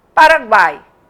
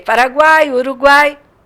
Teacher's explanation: o U é pronunciado fraquinho. O A é a vogal, é o som tônico, forte. O I é outro som fraquinho. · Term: tritongo